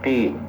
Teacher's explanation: hampir sama itu dengan kaf, cuman qaf itu lebih tebal dikit. Kalau makhrajnya tempat keluarnya itu lebih ke dalam.